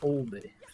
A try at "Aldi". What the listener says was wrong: No, I don't think it's much of an L sound.